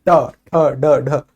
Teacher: जीभ का जस्ट आगे वाला हिस्सा जो है दांतों के ऊपर वाले हिस्से को छूता है और एकदम से नीचे गिरता है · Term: मूर्धा